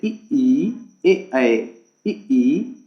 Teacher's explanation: तो जीव के आधार पर स्वरों के 3 भेद होते हैं, अग्रस्वर, मध्य स्वर और पश्च स्वर। अग्रस्वर ऐसा स्वर जिनको बोलने में जीवा का अग्रभाग उपयोग में लिया जाता है, उनको हम अग्रस्वर कहते हैं।